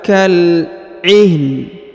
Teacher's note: huruf na dibaca tipis, ya, karena sebelumnya berharokat ha sukun